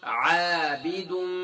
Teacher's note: تو گویا کہ میم مشدد ہے، میم دو مرتبہ پڑھی جا رہی ہے